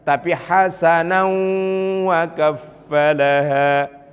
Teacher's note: Tuh, semua kalau diberhentikan bacaannya akan dipanjangkan. Tapi kalau kemudian disatukan maka berubah bacaan mad iwadnya menjadi bacaan gunnah, yaitu tanwin bertemu dengan wawu.